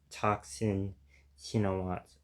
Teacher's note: The TH combination signifies an aspirated T, so it would be pronounced Toxin Shinawat according to the IPA that the Wikipedia article provides for his Thai name.